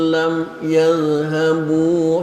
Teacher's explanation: mohon tidak mengkolkolahkan za, karena za bukan huruf qalqalah. Huruf qalqalah itu da.